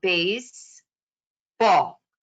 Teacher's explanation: a spondee word like baseball might become based ball so it'll sound very broken down may be choppy with the improper stress